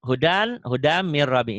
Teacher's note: Ini idgham yang tanpa dengung karena nun matinya ketemu ro ya.